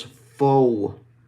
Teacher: So O, and then O, and then what we're going to do is actually finish with rounding our lips even more, almost like we're blowing a kiss